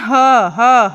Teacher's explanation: ह को बोलने से हमारे कंठ से आवाज आती है हमारे गले से आवाज आती है तो ह जो व्यंजन है उसका उच्चारण स्थान है कंठ क्या